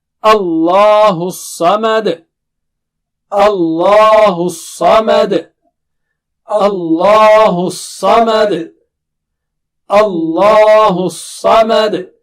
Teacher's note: صاد جو ہے نا بہت موٹا اور اونچا ہے. اللہ الصمد نہیں، صمد. اور آخر میں بھی قلقلہ ہوگا